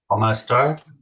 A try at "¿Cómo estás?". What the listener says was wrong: ¿Cómo estás? With an S at the end.